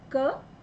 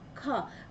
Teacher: क में जो वायु कम मात्रा में निकल रही है, ख बोलते हैं वायु जो अधिक मात्रा में निकल रही है, तो जिसमें कम मात्रा में वायु निकलती है वो अल्प प्राण और जिसमें अधिक वायु में निकलती है वो महाप्राण, क ख।